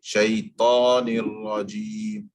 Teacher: You open your mouth for the sake of the fatha, but you don't do any movement of the lips to get that full mouth sound. That comes from the tongue.